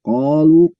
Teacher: ko fathah ada alif, berarti kan 2 harokat bacanya, itu namanya mat asli atau mat tobi'i, itu dibaca 2 harokat, tidak kurang tidak lebih, hanya baca 2 harokat.